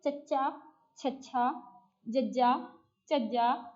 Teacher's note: ਜੀਭ ਕਠੋਰ ਤਾਲੂਏ ਦੇ ਨਾਲ ਜੁੜ ਕੇ ਪੂਰਨ ਰੋਕ ਪਾਉਂਦੀ ਹੈ। ਇਹਨਾਂ ਵਿਅੰਜਨਾਂ ਨੂੰ ਉਚਾਰਦੇ ਸਮੇਂ ਕੀ ਹੁੰਦਾ ਹੈ ਕਿ ਤੁਹਾਡੇ ਤਾਲੂਏ ਦੇ ਨਾਲ ਜੋ ਤੁਹਾਡੀ ਜੀਭ ਹੈ ਕਠੋਰ ਤਾਲੂਏ ਦੇ ਨਾਲ ਆਪਸ ਦੇ ਵਿੱਚ ਲੱਗ ਜਾਂਦੀ ਹੈ ਔਰ ਦਬਾਅ ਬਣਦਾ ਹੈ, ਔਰ ਜਿਹੜੀ ਆਵਾਜ਼ ਪੈਦਾ ਹੁੰਦੀ ਹੈ ਉਸ ਵਿਅੰਜਨ ਨੂੰ ਅਸੀਂ ਕਹਿੰਦੇ ਹਾਂ ਜੀ ਤਾਲਵੀ ਵਿਅੰਜਨ। · तालवी मतलब तालवे नाल तुहाडी बिल्कुल जीभ रगड़ रही है, कठोर हो रही है।